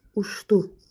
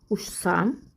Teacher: Ç samitindən sonra d, s və z samitlərindən hər hansı biri gəlirsə, ç samiti ş kimi tələffüz olunur.